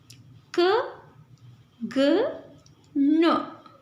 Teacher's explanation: velar. These are articulated by the back of the tongue and the soft palate.